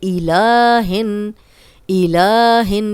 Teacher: لام پہ کھڑا زبر دو حرکات لمبا کریں گے